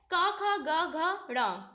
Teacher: आपके कंठ वाले होते हैं ये कहां से जब इनको आप बोलते हो तो आपकी ध्वनि कहां से आती है कंठ मतलब गले से